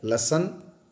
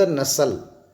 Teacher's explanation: तो याद रखें, न, स, ल वर्त्य भी है और ल, स, न दंत्य भी है।